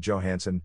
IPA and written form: dʒoʊˈhænsən (Johansson)